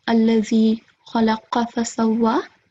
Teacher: Make sure to thicken the sound of kha and qa.